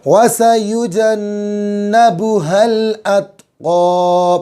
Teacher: بڑا قاف نکالیں گے تھوڑا حلق کے اوپر زور دے کر کے